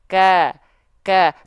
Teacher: Karena huruf vokal A itu ketika fathahnya keluar bukan makhrajnya. Ketika fathahnya keluar pangkal lidahnya nggak naik.